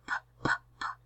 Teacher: our vocal folds are not vibrating. It's voiceless. Our lips come together. So our place of articulation is bilabial. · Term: stop